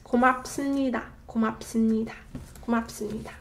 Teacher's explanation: So it's not 습니다, but 습니다. So 비읍 받침 becomes a 미음 받침 sound, therefore making it a lot smoother to pronounce. 고맙습니다. 고맙습니다.